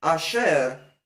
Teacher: Like this word asher doesn't begin with a, it begins with the guttural aleph, then the vowel a.